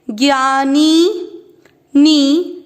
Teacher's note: नी की मात्रा बड़ी लंबा खींचेंगे